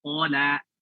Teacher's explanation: Qala. Di sini ko-nya tebal, lamnya tipis. Bukan qala.